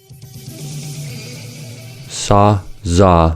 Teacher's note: To pronounce s and z, the tip of the tongue approaches the alveolar ridge but doesn't quite touch it. The opening is wide enough for airflow to continue, but narrow enough for the escaping air to become turbulent, hence the hissing sound. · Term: alveolar fricatives